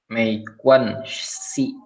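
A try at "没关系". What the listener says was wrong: Aku denger, ya Si, SI aja, Si. Tapi aku denger Kuannya kayak kebanting deh. Mei Kuan Si. Ya, Kuan panjangin ada 1. Kuan.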